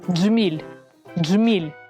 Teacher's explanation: звук Дж промовляється злито Зверніть увагу що під час вимовляння кінчик язика змикається з твердим піднебінням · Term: злитий звук Дж